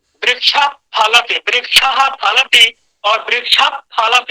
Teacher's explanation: वृक्षः हल्का प की तरह ध्वनि निकलेगी, वो प भी नहीं है, प ह को मिला दीजिए, प ह को मिश्रित करके कुछ निकालेंगे, उस तरह की ध्वनि निकलती है, बहुत सूक्ष्म ध्वनि निकलती है वो। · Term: उपधमानीय